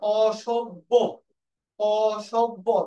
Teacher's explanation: এই জফলা থাকার কারণে এই অটা ওকার হয়ে যাবে